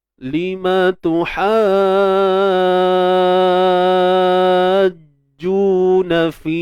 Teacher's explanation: Kita panjangkan ha tu 6 harakat, kemudian masuk jim bersabdu tu. Untuk jim bersabdu tu kita selesaikan baik-baiklah. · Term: mat lazim kalimi musaqqal